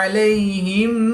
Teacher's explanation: یا ساکن سے پہلے لام پر زبر ہے تو یا لین اس کو لمبا نہیں کریں گے